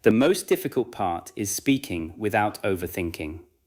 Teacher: Stress most difficult, speaking and overthinking. Keep the rest connected.